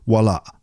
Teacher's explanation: there's a little glottal stop at the end of the word